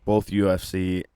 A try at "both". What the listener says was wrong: Did you say both? Do you use an L when you say both? Say it again. Say it again. He does. A boot.